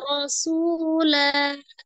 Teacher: tanwinnya berada di akhir ya, diwakafkan menjadi fathah 2 harakat menjadi mad iwad ya. Baca fathah 2 harakat.